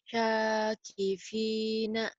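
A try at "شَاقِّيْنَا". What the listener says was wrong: Sa-nya sa biasa. Cadel. Ujung lidah ke ujung gigi. Sa.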